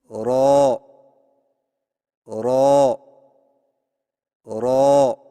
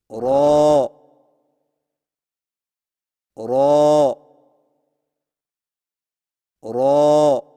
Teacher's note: را کی ادائیگی میں زبان کی نوک کی پشت کو اوپر والے دانتوں کے مسوڑوں سے لگا کر موٹی آواز میں پڑھیں